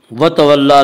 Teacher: عبس وتولى، وتولى لام کے اوپر کھڑا زبر ہے، کھڑا زبر کو ایک الف کے برابر کھینچ کر پڑھیں گے